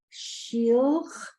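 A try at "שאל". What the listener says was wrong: What's that vowel? No, it's not an E. What's the vowel? Ale. So the word is shale. Shale.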